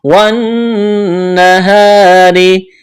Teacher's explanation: نون مشدد ہے، آواز ناک میں چھپائیں گے، غنہ کریں گے